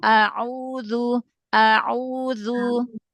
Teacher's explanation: huruf ainnya dari tengah tenggorokan lagi.